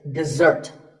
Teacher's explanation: the first syllable is de and the second starts with a z sound. We stress the second syllable, dessert.